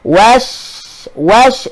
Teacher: Tapi asal pada huruf shin itu dia berada makhraj dia di tengah lidah. Wash sebab angin hemburan tu dia akan berada di dalam mulut kita.